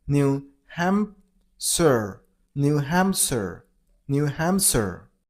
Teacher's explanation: You gotta stress on ham syllable,